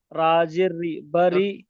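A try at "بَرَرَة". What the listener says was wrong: র জবর র। বাড়ির র নয়, হয়নি। বাড়ির এখানে কোনো র নিচে জের নেই। বা জবর বা, র জবর র, বা র, র জবর র, বা র র, তা দুজের তিন, বা র র তিন।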